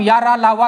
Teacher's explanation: जब हम या रा ला वा कहते हैं तो वायु बहुत कम मात्रा में निकलती है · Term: अल्प प्राण